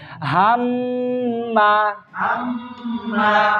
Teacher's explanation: গুন্নাহ। নাকের বাসি থেকে আওয়াজ, গুনগুন আওয়াজ বের হচ্ছে।